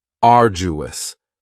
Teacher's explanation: arduous has three syllables and the stress is on the first syllable arduous now you don't hear that D sound that much it's